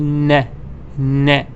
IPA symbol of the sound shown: n